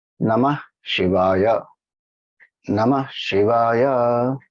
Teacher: So Ma and Ya go up, she goes down.